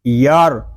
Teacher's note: فا زبر فا، والا سوفا یا را زبر یار، یہاں را ساکن ہے، را ساکن سے پہلے حرف پر زبر ہے، اس لیے ہم را کو پر پڑھیں گے